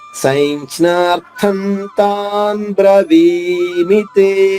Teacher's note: అనుస్వరం తర్వాత తా ఉంటే నా వస్తుంది. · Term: అనుస్వర ఉచ్చారణ